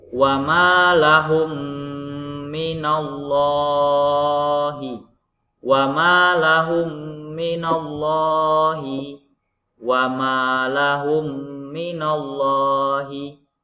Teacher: cara membacanya dengung dengan memasukkan bunyi mim sukun pada mim di depannya. Panjangnya 2 sampai 3 harkat atau 2 sampai 3 ketukan. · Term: idgham mimi